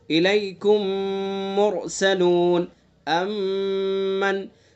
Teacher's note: میم ساکن کے بعد میم آئے گا تو ادغام ہوگا، اس میں غنہ کریں گے